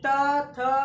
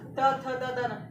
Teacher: अगर त देखोगे तो जीभ हमारा सीधा दांत के नीचे आके दबता है, त थ, और हमारा दांत जो होता है जीभ जो होता है हमारे दांत से लड़ता है या दांत को स्पर्श करते हुए निकलता है, तो हमारा त थ द द न, यानी त वर्ग जो होता है वो टोटल हमारे क्या होते हैं, ये हमारा क्या कहलाता है दंतक कहलाता है।